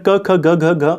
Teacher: जो क वर्ग है वो कंठ से बोला जाता है